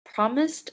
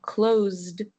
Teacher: Both promised and closed have an s before the ed d ending. However, promised has an s sound and closed has a z sound